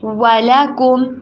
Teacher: واؤ کے اوپر ہونٹوں کو گول کرنا ہے. انگلش میں دو ساؤنڈز ہوتی ہیں، ایک ہوتی ہے وی، ایک ہوتی ہے ڈبلیو. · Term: ڈبلیو والی ساؤنڈ